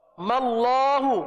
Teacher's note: اس میم کو لام کے ساتھ ملا دیا، وہ بن گیا ماللہ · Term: وصل